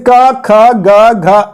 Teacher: कवर्ग का उच्चारण स्थान जो होता है वो कंठ होता है